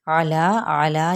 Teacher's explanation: عین کی حرکت کو لمبا نہیں کرنا اور لا پہ مد صلیب الف کا قائم مقام ہے